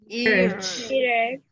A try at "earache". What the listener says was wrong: Earache. Remember, don't say H. No, it's ache.